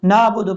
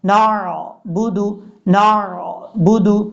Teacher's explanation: نون کے بعد عین ہے، جو کہ کئی لوگ غلطی کرتے ہیں، نون کے بعد عین کو حمزہ پڑھ جاتے ہیں، نعبد پڑھ جاتے ہیں، نعبد۔